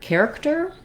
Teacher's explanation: we have first syllable stress so the care syllable is stressed and the other two syllables are shorter and have reduced vowels because it's stressed we have a clear vowel in that first